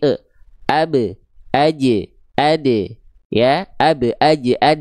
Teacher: Kalau tipis bunyinya seperti abe, aje, ade, ya, abe, aje, ade, karena memang huruf ba, jim, dal adalah huruf qalqalah yang dia karakter pelafalannya tipis